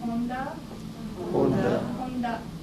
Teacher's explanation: you can feel the tongue is touching upper part of your mouth. That's N sound.